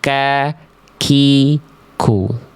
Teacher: kalau kaf pangkal lidahnya disentuhkan antara langit-langit lunak dan keras